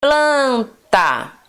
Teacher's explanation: plan é a sílaba mais forte